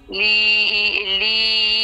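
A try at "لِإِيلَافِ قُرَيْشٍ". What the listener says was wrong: এই এই এই এই এই যে যে লি এর মধ্যে টান নাই তো, লি এর মধ্যে টান নাই। লি ই। এই শোনেন, লি ই, লি ই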